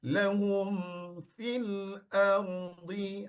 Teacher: Sebab hum situ adalah izhar jelas pada mim. Maka tutup mulut dulu sampai kepada bunyi mim lah.